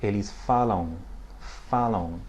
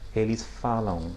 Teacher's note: we're not pronouncing an M at the end, we're pronouncing a nasalized A.